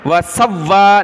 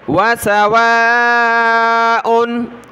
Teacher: واو الف مد ہے، اس کو کھینچنا، واو کو سخت نہیں کرنا ، وَسَوَّا نہیں پڑھنا، نرمی سے پڑھنا ہے، وَسَوَاءٌ آگے عین